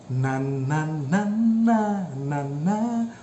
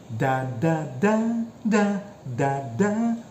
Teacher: your tongue is touching your alveolar ridge